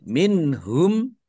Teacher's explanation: Nun sukun bertemu dengan huruf ha. Bacaan izhar dibaca jelas